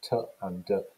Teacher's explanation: T and d are alveolar plosive sounds.